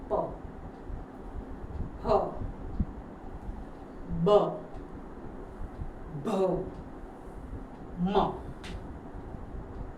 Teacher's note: નોટીસ કર્યું કઈ observe કર્યું બંને હોઠો આપણા બંધ થાય છે આખી લાઈન ના વ્યંજન કોન્સોનન્ટ બોલતી વખતે આપણા બંને હોઠો ભીડાય છે બંધ થાય છે ભેગા થાય છે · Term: પ વર્ગ